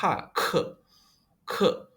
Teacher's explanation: Lalu yang K bacanya kayak K ditambah H